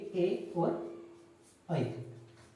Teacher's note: कंठ तालव्य, कंठ तालव्य, कंठ और तालु, कंठ तालव्य। तो कंठ तालव्य से जो उच्चारित होंगे वो होंगे ए और ऐ।